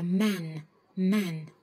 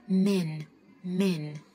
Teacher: người anh ấ họ sẽ đọc là man man nhưng cũng cái từ như vậy nhưng mà gì theo cách đọc của người Mỹ thì nó sẽ xu hướng chữ a la với chữ e hơn